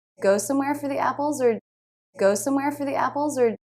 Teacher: or was also reduced to the schwa R sound, which is just a very quick R